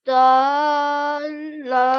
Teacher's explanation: we have to produce a nasal sound as we end the tanween over here